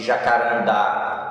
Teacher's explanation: Então a sílaba de jacarandá, a primeira sílaba é o da e não o já, tá bom? E por isso oxítona.